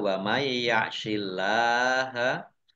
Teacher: Nun sukun bertemu dengan huruf ya, itu birunah, masuk dengan mendengung, yaitu mendengung ya, ditandai yaknya ada tasbihnya.